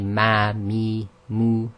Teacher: it's pronounced by the meeting of the dry portions of the lips. However, the air also travels through the nasal passage. So when you say when you say it, just close your nostrils with your fingers and the sound will stop.